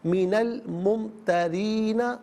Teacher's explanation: चूँकि मुमतरीन में रा के नीचे ज़ेर है तो रा को बारीक करके पढ़ा जाएगा मिनल मुमतरीना।